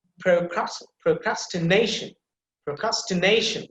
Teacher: the secondary stress marks is there right before the ka sound · the na sound, that syllable, it will be emphasized because you can see the primary stress marks there at the top of na sound.